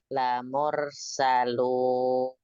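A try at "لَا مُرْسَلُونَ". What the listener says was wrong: Munya harus lebih monyong.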